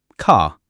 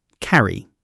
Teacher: we do pronounce the R when it's before a vowel sound.